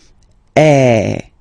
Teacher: the sound is really open, and normally your mouth should be opened a little bit more than with the accent aigu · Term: accent grave